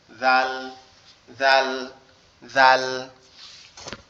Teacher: জাল অক্ষরটা আমাদের জিহ্বার আগা সামনের উপরে দুই দাঁতের আগার সঙ্গে লাগবে, লেগে উচ্চারিত হবে জাল, জাল, জাল।